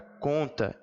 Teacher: a m ou n garante a presença de um dígrafo vocálico são duas letras e um único som e esse som é um som de vogal só um som nasalizado